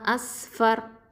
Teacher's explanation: ராவில் சுக்கூன் பெற்று அதுக்கு முன்னாடி உள்ள எழுத்து ஃபத்தாங்கிறதுனால இந்த ராவை தஃப்ஹீமாக ஓதணும்